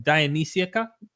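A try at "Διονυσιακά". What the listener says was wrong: Dionysiaca. The stress is on the end, so it's not Dionysiaca. It's like Dionysiaca. It's like Papa.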